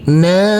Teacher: huruf nun kita baca panjang dengan panjang dua harakat karena di atasnya ada huruf alif kecil yang berdiri tegak lurus